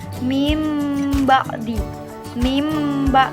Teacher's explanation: contoh hukum bacaan iqlab disini saya mencontohkan mimba'di i imba this nun mati bertemu dengan huruf ba maka membacanya dimasukkan ke dalam huruf mim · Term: iklab